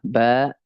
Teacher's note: bersatunya ya bibir atas dan bibir bawah